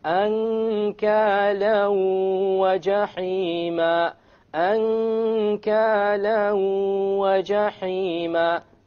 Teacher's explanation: You merge the tanween along with the waw and you move on. You don't pronounce the end sound and you have a ghunna. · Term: idgham with ghunna